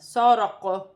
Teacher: وقف کی صورت میں حروف قلقلہ میں جب وقف کیا جائے گا تو زبر گر جائے گی اور قاف ساکن ہو جائے گی۔ ساکن قاف پر وقف کی صورت میں قلقلہ ہوگا